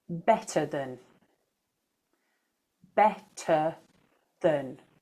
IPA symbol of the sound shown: ə